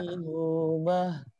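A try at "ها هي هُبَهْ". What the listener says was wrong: Jangan terhenti. jangan terhenti. Ha hi hu bah. Jangan ha hi hu. Nah, ya bagus tapi masih terhenti. Makrosnya benar tapi masih belum ngalir.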